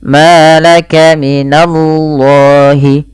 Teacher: lam lafzul jalalah yaitu lam tafhim dibaca dengan tebal